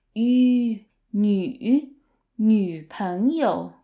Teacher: So the yu sound requires you to put your lips together and push them forward.